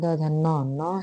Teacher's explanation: न के साथ नासिका के साथ दंत।